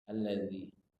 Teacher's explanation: makhraj zal ini ujung lidah bertemu dengan ujung gigi seri atas. Ujung gigi seri atas.